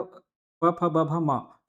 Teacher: प वर्ग सभी वर्णों का उच्चारण जो है होठों के आपस में मिलने मतलब ओष्ठ व्यंजन